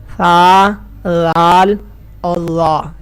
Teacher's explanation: آپ نے اپنی زبان کی نوک کو اوپر والے دانتوں کے کنارے کے ساتھ ملانا ہے اور پھر ان حروف کو ادا کرنا ہے اور سیٹی کی آواز پیدا نہیں کرنی۔